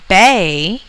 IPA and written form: beɪ (bay)